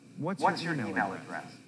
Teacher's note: In a sentence with falling intonation, the voice goes down at the end of the sentence. Listen to the way my voice goes down at the end of this question.